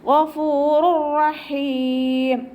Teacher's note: തെൻവീനിലുള്ള നൂനിനെ നമ്മൾ റോയിലേക്ക് ലയിപ്പിക്കുന്നുണ്ട്, പക്ഷേ മണിക്കാതെ ഓതി കൊടുക്കുക കേട്ടോ. ഗഫൂറുർ റഹീം എന്ന് പറഞ്ഞിട്ട് മണിച്ചിട്ട് ഓതരുത്. · റോയിൻ്റെ വൊമ്മയെ മാത്രം ഉച്ചരിക്കുക, തെൻവീനിനെ അടുത്ത റോയിലേക്ക് ചേർത്തി കൊടുക്കുക, ലയിപ്പിച്ച് കൊടുക്കുക കേട്ടോ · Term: ഇദാം ബിലാഗുനയുടെ